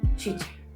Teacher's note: Las africadas es el paso de la corriente del aire que se impide por momentos y al liberarse se produce una fricción